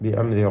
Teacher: അംരി എന്നതിലെ സാക്കിനായ മീം ഇൽഹാർ ഷഫവി മണിക്കാതെ വെളിവാക്കുക